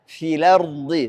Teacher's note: Karena kita pindahkan harakatnya hamzah ke lam. Jadi bacanya filardi. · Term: nakal